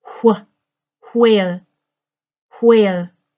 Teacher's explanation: and in an older style of English it was more common some people will pronounce their wh closer to an HW and it will have a sound of breath